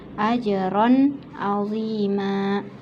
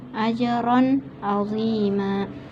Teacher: izhar ini tanwinnya dibaca jelas karena bertemu dengan ain